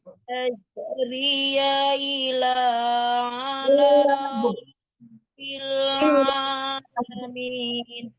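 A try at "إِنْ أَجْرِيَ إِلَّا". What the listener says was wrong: illanya lamnya tasdid, ulang lagi. In ajriya illa, ditahan huruf tasdid. ri-nya tidak panjang karena ya-nya berharakat kan.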